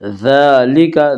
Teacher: دال کے اوپر کھڑا زبر ہے، کھڑا زبر کو ایک الف کے برابر کھینچ کر پڑھیں گے